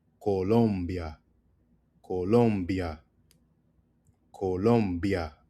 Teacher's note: Emphasis on the third syllable